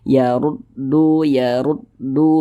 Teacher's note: ra yang memiliki tanda baca dah maka dia dibaca tafkhim dibaca tebal sehingga pangkal lisan kita itu naik terangkat ke atas ketika Kita mengucapkannya